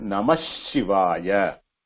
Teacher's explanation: The visarga is replaced by shakara. Not sha. It is a shakara consonant.